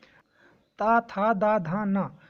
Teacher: ता वर्ग के जितने भी वर्ण हैं इनका उच्चारण दांत से होता है ना। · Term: दंत वर्ण